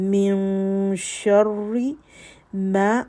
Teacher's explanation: من، اخفا، نون ساکن کے بعد شین. شرری، را کے اوپر شد ہے تو اس میں تکرار ہے صفت میں